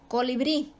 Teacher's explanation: la última sílaba bri es la tónica y termina en vocal, por lo tanto se acentúa. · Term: sílaba tónica